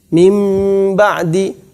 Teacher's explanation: Kalau kita membaca mim ba'di, kata beliau adalah seakan-akan mimnya bertasydid, padahal mimnya tidak bertasydid. Seakan-akan mimnya bertasydid.